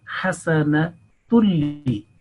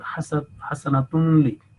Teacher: So if hasanatun making tanween followed by lam mushaddad, then the tanween, the nasal sound, will totally be merged, and that will lose its identity. So it will be only one dhamma or one stroke will be joined to the next one. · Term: complete merging without gunna